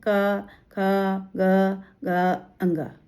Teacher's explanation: पहला जो क वर्ग है वो गले से बोलते हैं यानी कंठ